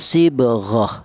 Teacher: walaupun dia bertawin fathah maka tidak dibaca mad iwat melainkan dibaca mati atau sukun